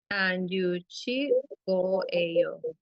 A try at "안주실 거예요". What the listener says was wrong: Muy bien, excelente.